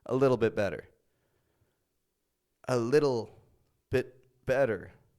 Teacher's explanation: all those te's I didn't really pronounce any te's did I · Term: flap te